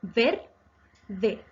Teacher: Es grave porque su acento está en la penúltima sílaba ver. No lleva tilde porque termina en vocal.